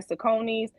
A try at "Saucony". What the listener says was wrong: That's Saucony, not Saucony's. It's Saucony. It's Saucony. It's Saucony. It's Saucony.